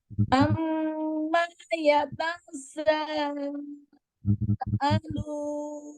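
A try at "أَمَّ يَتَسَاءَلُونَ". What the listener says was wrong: Ya tasa, tidak ada tasdidnya. Amma ya tasa.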